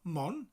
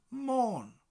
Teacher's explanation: And that elongates the O. So it's not Mon, but Môn. Almost like the morn in morning.